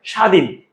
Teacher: শব্দের শুরুতে বফলার উচ্চারণ হয় না।